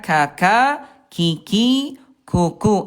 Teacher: ada udara tapi tidak berlebihan. Nah, Bunda hati-hati jangan sampai ketukar sifat hurufnya. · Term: kaf